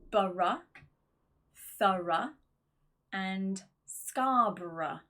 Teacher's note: the schwa sound, which is that dropped /ə/ sound, that very small vowel.